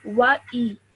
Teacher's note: the alif has a simple kasra underneath, so you would not stretch this for 2 seconds. It would only be for 1 second.